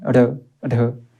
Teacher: इन्हे क्या बोला जाता है उत्क्षिप्त व्यंजन बोला जाता है और इनका उच्चारण की बात की जाएगी तो जीव के अग्र भाग के द्वारा झटके से होता है